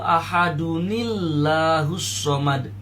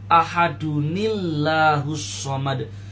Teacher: terus bertemu dengan alif dari lafaz Allah maka caraembacanya adalah ahadunillahusad suara tanwinnya dirubah menjadi suara Nun berharakat kasrah